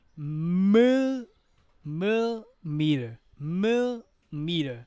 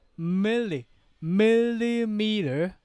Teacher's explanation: you can hear the absence of the second syllable